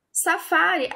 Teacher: a sílaba tônica dela é penúltima né mais forte